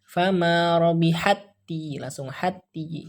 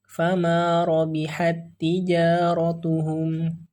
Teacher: Jadi cara bacanya, huruf pertama dimasukkan ke dalam huruf yang kedua, dibaca tanpa gunnah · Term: idgham mutamasilain